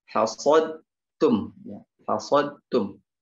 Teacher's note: Hasad langsung masuk ke huruf ta.